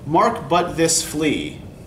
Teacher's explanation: So yeah, all four of these syllables are stressed. Because he's trying to get your attention and focus you on this little flea, right?